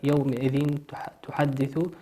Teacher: تنوين أتى بعده حرف التاء، والتاء من حروف الإخفاء تخفى